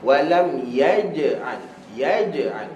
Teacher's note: Huruf jim makhraj dia adalah tengah lidah ke langit-langit atas. Tengah lidah ke langit-langit atas.